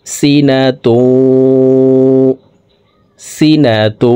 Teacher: তানউইনের পর ইদগামে বাগুন্নার 4 হরফের একটি হরফ ওয়াও আসছে, এই কারণে এই তানউইনওয়ালা গোলতাটি তাসদিদওয়ালা ওয়ার সাথে গুন্নার সহিত মিলাইয়া পড়ব।